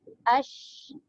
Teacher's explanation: Dengan lidah kita terangkat ke langit menyebabkan bunyi tafashi keluar